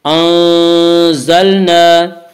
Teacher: نون ساکن اور نون ساکن کے بعد سا ہے اور سا حروف اخفا میں سے ہے، لہذا نون کی آواز کو ناک میں چھپا کر پڑھیں گے یعنی اخفا کریں گے